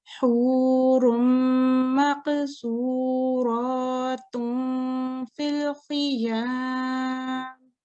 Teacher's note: the ghunna occurs for 2 seconds, and the reason it occurs for 2 seconds because you need to give it time so you can do the nasalization